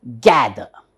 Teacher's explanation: we all say gather but we should not pronounce R we need not pronounce could be it's not wrong nowadays it · there is an upper stress here for the first syllable